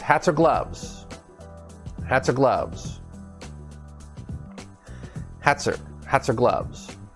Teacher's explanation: so it's a consonant connected to a vowel and we tie everything together that's linking